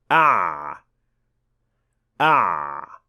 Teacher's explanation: The sound of ayn is a semi-continuous sound, which means that it can be extended or made longer.